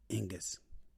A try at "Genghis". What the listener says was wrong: You're saying another G in there somewhere.